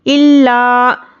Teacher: लाम पर सख्ती से पढ़ना है और एक अलिफ के बराबर खींचकर पढ़ना है हुरूफ मद्दा को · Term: तजदीद